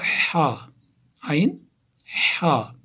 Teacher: وسط حلق، یعنی حلق کا درمیانی حصہ